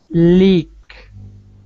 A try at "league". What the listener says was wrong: It sounds like you're saying leak. Leak. The leak is bad. Don't say the leak. You want to say league. G. League.